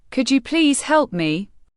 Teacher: When you ask, could you please help me, your voice must go up at the end. If it goes down, you sound rude. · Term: intonation